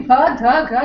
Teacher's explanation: you can make out that it is voiced, it is aspirated, and it falls under the category of stops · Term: voiced aspirated stops